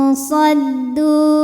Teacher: nun sukun menghadapi huruf shad, maka nunnya samar-samar menuju shad disertai dengungan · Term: ikhfa awsat